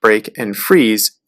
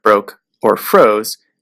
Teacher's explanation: changing the middle vowel of words like break and freeze to a long O sound like broke or froze